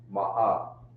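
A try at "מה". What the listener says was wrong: Ooh, you cut the sound there. We don't talk about cut the sound. Just make it flow. Remember, you remember them Arabs you used to know? Yeah, they got a sound where, you know what I mean? They don't cut the voice, they make it flow. You gotta flow.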